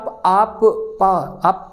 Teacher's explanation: आपके लिप्स की जरूरत पड़ रही है ठीक है ओठों की जरूरत पड़ रही है